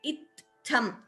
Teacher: so first t is alpaprana the next tha is mahaprana